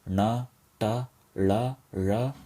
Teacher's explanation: And consonants with the dot below, such as na, ta, la, ra, or retroflex consonants, which are pronounced by curling the tongue far back and touching the upper roof of the mouth